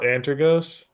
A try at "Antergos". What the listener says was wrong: You have to roll your R's with Antergos. It's not But you got to roll your R, otherwise you're not saying it correctly.